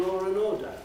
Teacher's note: do make the R links when there isn't an R in the spelling